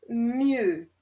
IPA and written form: miø (mieux)